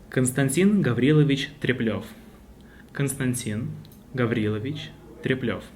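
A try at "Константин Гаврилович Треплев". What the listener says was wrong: Perfect. Thank you very much.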